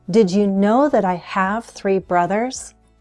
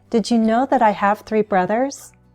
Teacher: I'm stressing the main verbs the number and the noun